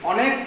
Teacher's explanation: এবারে অনেক, এবারে অনেক যখন বলছি তখন এইটা উচ্চারণ কিন্তু বিকৃতি নেই, অনেক অয়ের মতোই উচ্চারণ হচ্ছে। অনেক, অত, কত, বড় ইত্যাদি শব্দ কিন্তু অ দিয়ে উচ্চারণ হয়, ও দিয়ে নয়।